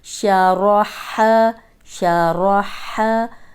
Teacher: अब रॉ मोटी इसलिए कि इसके ऊपर ज़बर है और हा हरूफ हल्की हलक से निकालें।